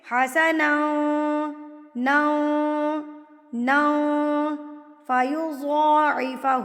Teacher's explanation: تو یہاں پر تنوین کی آواز کو ناک میں چھپا لیں گے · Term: اقفا